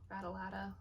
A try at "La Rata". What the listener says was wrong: Yeah, it is La, not L.